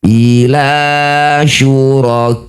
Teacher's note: Ini ada fathah diikuti alif ka disebut bacaan mad thobi'i bertemu hamzah di satu kata. Jadilah bacaan mad wajib muttasil ka yang bertanda layar. Panjangkan enam harakat ya atau enam ketukan.